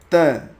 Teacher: त जब आप बोलते हैं तो आपकी जो जीभ है वो दांत को छूती है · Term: त वर्ग